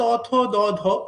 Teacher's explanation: জীভের যে সামনের অংশটা সেটা দিয়ে উপরের যে মানে দাঁতটা সেটাই স্পর্শ করা হয় এবং এইভাবে বাধা সৃষ্টি করা হয়। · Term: দন্তধ্বনি